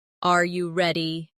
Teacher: For example, when a native speaker asks a yes or no question like, "Are you ready?" the pitch of their voice goes up at the end